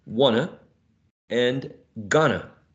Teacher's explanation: The t is not present there because it was elided.